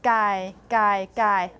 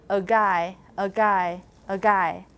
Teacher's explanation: So you will have more voiced feature in this context when it's between two voiced segments.